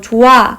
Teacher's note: 히읗의 음가가 워낙 약하기 때문에 예를 들어 조아 같은 경우는요 발음되지 않고 모음한테 밀려서 그냥 떨어지는 것입니다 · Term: 히읗 탈락